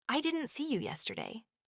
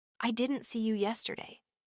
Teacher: in the sentence, I didn't see you yesterday, notice that the stress is on didn't and yesterday